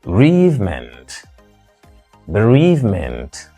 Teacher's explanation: In either case, that is, whether you say bereavement or you say bereavement, the word is traditionally stressed on the second syllable. So second syllable, second syllable.